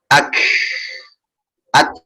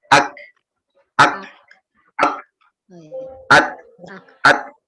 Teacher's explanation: Sama halnya kaf dengan ta. Jadi kaf dengan ta berhentiin dulu suaranya, otomatis udara ngalir. Tapi kalau suaranya ngalir, udah pasti salah.